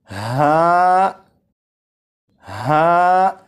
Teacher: ہا حلق کے نیچے والے حصے سے ادا ہوتا ہے، اور جب اسے پڑھیں گے تو آواز ذرا بھاری ہو، جیسے ہا، ہا۔